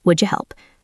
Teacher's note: Instead of three distinct beats would you help, it becomes two beats.